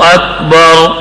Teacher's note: یہ را پر یعنی موٹی پڑھی جائے گی کیونکہ قانون یہ ہے کہ را ساکن ہو اس سے پہلے زبر تو را موٹی پڑھی جاتی ہے